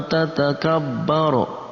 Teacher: Nah, kemudian ada nun mati bertemu dengan ta ikhfa, tatakabbaro. Nah, itu nun mati bertemu dengan ta dibaca samar, kita kasih tambahan eng di antara nun dan ta